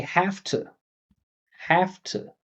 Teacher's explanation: we always turn the V into an F. F and V are minimal pairs, so all you're really doing is removing the vibration in this case.